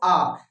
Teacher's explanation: जब आ बोलते हो तो पूरी का पूरा मुंह जो है खुल जाता है, बहुत बड़ा सा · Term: विवृत